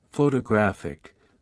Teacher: in photographic the stress shifts to the third syllable